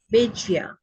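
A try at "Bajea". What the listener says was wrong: Bahia. In Spanish is pronounced like an H.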